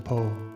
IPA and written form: poʊ (Poe)